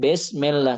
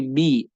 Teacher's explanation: Jadi kita juga harus menyempurnakan suaranya; fathah adalah 'a'. Kasrah adalah 'i', bukan 'e'